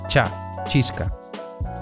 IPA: tʃa